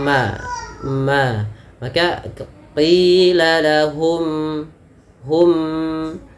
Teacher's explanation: syafawi berkaitan dengan bibir kita yaitu adanya huruf mim yang mana mim termasuk Daripada makhrajnya keluar daripada bibir kita yaitu dirapatkan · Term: izhar syafawi